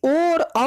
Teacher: ओ और औ का उच्चारण स्थान कंठ और ओष्ठ होता है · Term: कंठ ओष्ठो